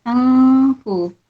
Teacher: Dia ada ikhfa hakiki, dia baca samar-samar dan dengung.